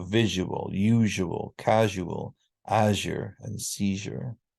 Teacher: the main reason we have a ja is because of this sound change from zya to ja · And finally, zya becomes ja.